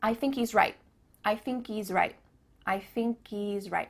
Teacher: Do you notice too at the end of the word right, there's no T sound.